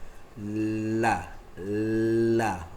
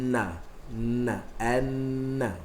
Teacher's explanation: Bahagian atas lidah, hujung lidah atas. Hujung lidah atas sentuh gusi atas, tengah-tengah. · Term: huruf lam